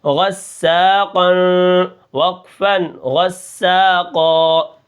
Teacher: غین جو ہے یہ موٹے حرفوں میں سے ہے تو اس کو ہم موٹا کر کے پڑھیں گے، اور سین کے اندر سیٹی جو ہے وہ برقرار رہے گی